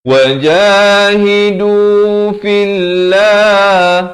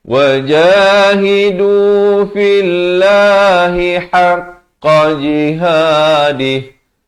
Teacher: Lafz jalalah di sini dibacakan dengan nipis dua harakat